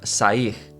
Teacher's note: when the R is at the end of a word, it gets an H sound